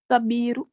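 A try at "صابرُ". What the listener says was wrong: Pour allonger le sod, juste, qui manque.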